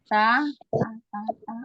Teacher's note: Ujung lidah bertemu dengan tempat tumbuh gigi atas. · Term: huruf ta